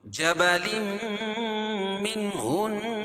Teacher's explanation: جبلم کو جب میم میں ملائیں گے تو یہاں ادغام مال غنہ ہو جائے گا. جبلم منہن نون مشدد ہے.